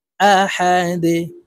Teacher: দুই পেশ দুন আহাদুন দালকে ওয়াকফুর ক্ষেত্রে সাকিন করে ফেলবো আহাদে দাল যেহেতু কলকালার হরফ নিচের দিকে ধাবিত করে ধাক্কা দিয়ে উচ্চারণ করব